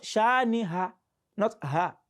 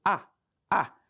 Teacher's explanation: they mistakenly put ha in place of hamza. And the reason for that is because they both come from the throat, both hamza and ha.